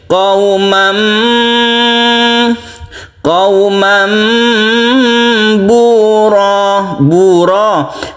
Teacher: Rohnya ini 1 alif saja karena dia itu mad iwad.